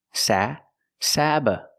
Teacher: the first syllable is the short a like black cat sa Sab the second syllable is relaxed uh Sab sabotage sabotage